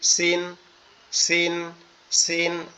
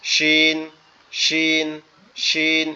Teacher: সিন আমাদের নিচের দাঁতের সাথে জিহ্বার আগা লাগবে, আর শিন হচ্ছে দুই দাঁতের পাটি একসাথে লেগে থাকবে।